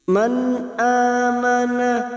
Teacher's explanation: sukun bertemu ha nun sukun bertemu Hamzah idhar halqi dibaca jelas tanpa mendengung